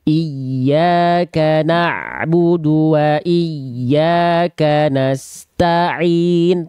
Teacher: Jangan ta'in. Tak dulu tuntas baru ain.